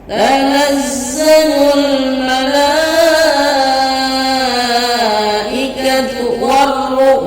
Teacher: ketika dibaca dia langsung memasukkan huruf ro. Alif lamnya tidak dibaca. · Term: alif lam samsiyah